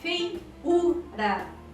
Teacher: Vejam que eu tenho o ditongo fei, ei, e depois uma sílaba tônica, vogal u tônica, u.